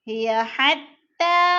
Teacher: حتی کی تا کے اوپر کھڑی زبر ہے، کھڑی زبر حروف مدہ کا قائم مقام ہوتی ہے، کھینچ کر پڑھنا ہے۔